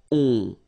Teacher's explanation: Okay, and then this O-N, so it's a nasal and it goes in your nose and it goes like on. Alright, so you don't hear any N